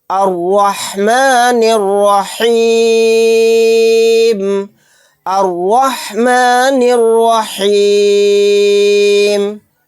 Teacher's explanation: یہاں پر را کے اوپر زبر ہے، اس را کو موٹا پڑھیں گے